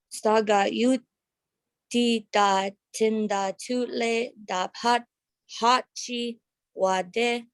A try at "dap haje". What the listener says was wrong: So you said that all good. Just is dap haje instead of E.